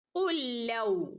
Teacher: ഉല്ലൗ ഇവിടെ ഒരു സുക്കൂനുള്ള ലാമുണ്ട്, ഒരു ഹറക്കത്തുള്ള ലാമുണ്ട് അല്ലേ. ഇവിടെ ഈ രണ്ട് ലാമിനെയും കൂടെ നമ്മൾ ഇദ്ഗാം ചെയ്ത് ഓതുകയാണ് വേണ്ടത്. രണ്ട് ലാമിനെയും കൂടെ കൂട്ടിച്ചേർത്ത് ഓതുക. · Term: ഇദ്ഗാം മുതമാസിലൈൻ